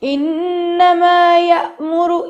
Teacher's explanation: جب بھی الف کے اوپر جزم آتا ہے اس وقت ہمیشہ ہمیں یہ چیز یاد رکھنی پڑے گی کہ الف کے اوپر جزم آتے ہی ہمیں جھٹکا دینا ہوتا ہے. جب بھی الف کو، جسے ہم حمزہ کہتے ہیں، جب بھی آپ کو جزم کی علامت نظر آئے گی یہاں پہ لازمی جھٹکا دیا جائے گا.